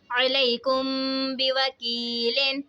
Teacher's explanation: عین زبر ع، لام یا زبر لئی، علی، کاف میم پیش کم، علیکم، با زیر بی، علیکم بی، واو زبر وا، علیکم بی وا، کاف یا زیر کی، علیکم بی وکی، لام دو زیر لن، علیکم بی وکیلن۔ میم ساکن کے بعد حرف با آ رہا ہے تو یہاں پہ اخفاء شفوی ہوگا، یعنی ہم نے یہاں پر غنہ کر کے پڑھنا ہے